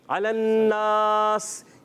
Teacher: اچھا اسی طرح اب وقف کرنے کا، جیسے آپ نے کہا الذین اذا اکتالوا علی الناس، یہاں جب وقف کریں گے، سانس توڑیں گے تو علی الناس ہم نے کیا کرنا ہے، سین کو ساکن کر دیں گے